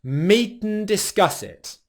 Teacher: The way that we do this is we take the word 'and', and it simply becomes the /n/ sound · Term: rhythmic pronunciation